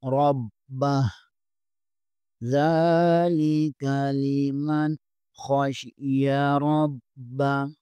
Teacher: نون ساکن کے بعد خا حرف حلقی میں سے ہے، یہاں غنہ نہیں اظہار ہوگا